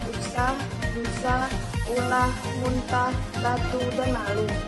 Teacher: u vokal atas belakang bulat